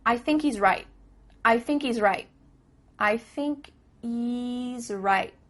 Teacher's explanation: There's no H happening here. I thinky. Thinky.